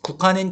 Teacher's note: 국화는 기역과 히읗이 합쳐서 키읔이 된 거고요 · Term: 자음 축약